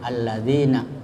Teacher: Kemudian ada di situ mad, ya, mad tabi'i, mad yang biasa, panjangnya 2 harakat atau 1 alif